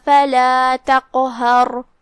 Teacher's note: کلمت تقہر میں یہاں حرف القاف ہے, قاف حروف التفخیم میں سے ہے اور جو کہ اس پہ جزم ہے تو یہاں قاف کا حکم ہے قلقلہ لہذا قاف کو ہلاتے ہوئے اور اسے بھاری آواز میں یہ کلمہ کو ادا کریں گے